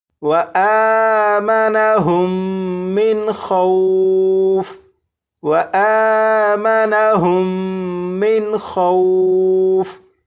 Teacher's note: یہاں پر میم ساکن کے بعد دوسری میم ہے تو یہاں پر غنہ کر کے پڑھیں گے. یہاں پر نون ساکن کے بعد خا حروف حلقی میں سے ہے تو یہاں پر نون ساکن کو ظاہر کر کے پڑھیں گے.